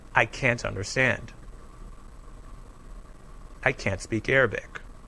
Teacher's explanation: when we say the word can't we often don't say a clear t sound at the end